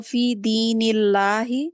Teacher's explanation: हम लाम को बारीक पढ़ेंगे क्योंकि इससे पहले दीनी के नीचे जेर है